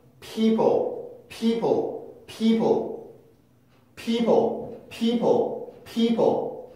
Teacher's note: P에서 L로 뚝 끊기는 게 아니라 중간에 혀가 움직이면서 만들어내는 소리가 있는데, 그게 바로 슈아 소리입니다. 슈아 소리. 내가 만들어내는 게 아니라 자연스럽게 소리가 이동하면서 만들어지는 소리.